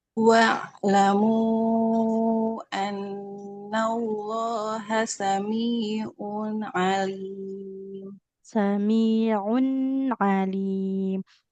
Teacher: tanwinnya kan ada bunyi nun sukunnya enggak boleh memantul